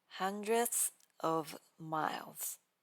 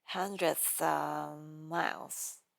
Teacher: we are going to treat of as a tiny h sound and glue it directly to the next word with zero gaps.